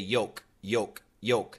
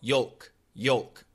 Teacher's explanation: many Americans do not pronounce the L